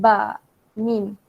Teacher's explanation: Ba dengan mim ni dia keluar di bibir. Macam ba, mim. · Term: huruf syafawiyah